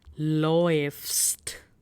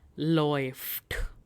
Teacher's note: the diphthong A umlaut and U, the pronunciation is again OE